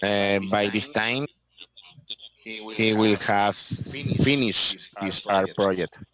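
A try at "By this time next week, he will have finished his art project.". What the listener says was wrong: Next week. By this time, next week. So you skip next week.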